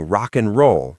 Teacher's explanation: but I only hear a tiny N sound